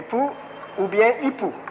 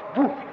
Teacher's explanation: le P égyptien, qui était une occlusive sourde, a été sonorisé parce qu'elle s'est trouvée presque en position intervocalique